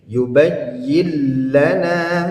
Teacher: Dia idgham itu artinya memasukkan, ya, huruf pertama ke dalam huruf kedua, ya, dilebur artinya, ya. Nah, namun di sini dia tidak berdengung, sehingga bunyi nun dan huruf nunnya hilang karena sudah masuk ke dalam huruf lam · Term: idgham bila gunnah